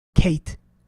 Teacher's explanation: A in Kate is not a long vowel. That's a diphthong. That's a mixture, a blend between the A and the I. Okay, so in Arabic, the way we do that, we have fatha followed by ya, A, Kate.